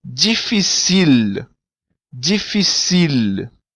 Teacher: O L em crioulo, ele não tem som de U, como em português, mas sim de L mesmo.